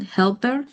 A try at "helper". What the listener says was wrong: Yeah, that one is actually pronounced like it's spelled.